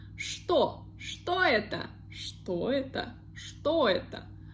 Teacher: Also, we see the letter, the sound ch, but we pronounce it like sh.